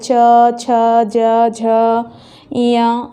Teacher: इसका उच्चारण करने में हमारा जो जीभ है वो तालु को स्पर्श करता है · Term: तालव्य वर्ण